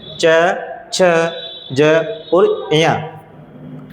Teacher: उनमें स्पर्श तो होता है लेकिन साथ में संघर्ष भी होता है। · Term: स्पर्शी संघर्षी